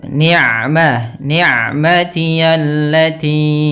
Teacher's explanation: Hati-hati jangan sampai masuk ke rongga hidung lafal ain ya. Ya, kalau kita lagi pilek biasanya mungkin agak masuk. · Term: huruf ain